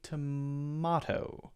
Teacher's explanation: the British accent might be more likely to be tomato more of an ah sound there a diff slightly different vowel sound and again that's oversimplified because